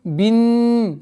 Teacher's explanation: Согласовки кесра уходим на удвоенный нун. И удержание назализации в размере двухогласовок